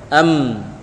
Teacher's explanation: Rapat sama rapat tapi mi naik ke hidung.